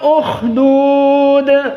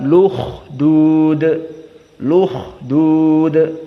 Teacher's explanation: harakat Hamzah yang dihilangkan dipindahkan kepada yang sebelumnya inilah dinamakan annaql